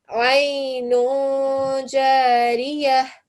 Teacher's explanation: even though you have a tanveen, you will still give it a nasal sound because Jim is not part of those letters that we've just looked at.